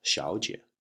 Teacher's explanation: the 小 in 小 姐 becomes second tone because there are two third tones together. So you would get 小 second tone, 姐, 小 姐, which is used to refer to a young lady.